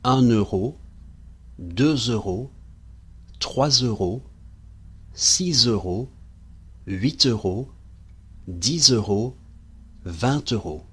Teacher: The numbers 8 and 20 have a T that we can clearly hear, while all the others now do a Z. · You will have noticed that after the number 1, we're now linking with the N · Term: liaison